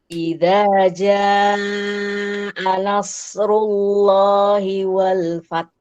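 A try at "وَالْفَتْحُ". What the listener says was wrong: Wal fath. Telat. Wal fath. Langsung dikeluarkan hamsnya.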